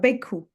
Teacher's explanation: it's the B but you drop the aspiration